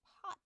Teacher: a closed off t as in pot